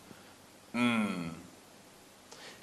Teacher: we're closing both lips and the air is escaping through the nasal passage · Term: M sound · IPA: /m/